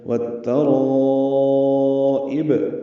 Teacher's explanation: تا پر زبر ہے، جلدی پڑھنا ہے، را پر پڑھیں گے، الف مدہ کے بعد حمزہ آنے کی وجہ سے مد متصل ہے، ہم اسے 4 حرکات سے زیادہ لمبا کرتے ہیں